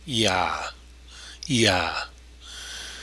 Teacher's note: You can't go from E to Ah without that Y sound in between. It happens naturally.